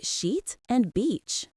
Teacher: The long e is the tense vowel requiring the smile and lip stretch. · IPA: iː